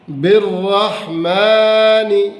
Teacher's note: بالرحمن، بالرحمن، با کے ساتھ الف ہے اور آگے لام جو ہے، یہ دونوں نہیں پڑھیں گے، با کو شد والے را سے ملائیں گے، با کو را کے اوپر چونکہ زبر بھی آ رہی ہے تو اس کو لہٰذا موٹا پڑھیں گے، کیا پڑھیں گے اس کو؟ بالرحمن، کھڑی زبر ہے لہٰذا اس کو تھوڑا کھینچیں گے، اور نون کے نیچے زیر ہے، اس کو مجہول نہیں پڑھیں گے، ایسے بالرحمانی نی نہیں پڑھیں گے، ٹھیک ہے بیٹا؟